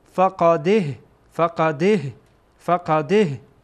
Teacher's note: اصل اینه که این دال با ها وصل میشه